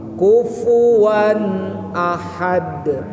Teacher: Kufu pakai fa, ujung gigi kena ke tengah bibir bawah